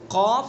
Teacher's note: قاف زبان کی جڑ اور اس کے مقابل اوپر کا تالو